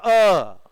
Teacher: अ पीछे कंठ से आएगा